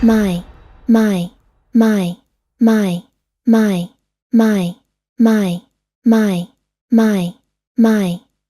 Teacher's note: To get the weak form of my, remove the ya sound at the end of the dictionary pronunciation of my, and then that remaining sound is the weak form of my.